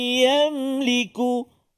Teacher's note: nun mati bertemu dengan Ya dengung dua harakat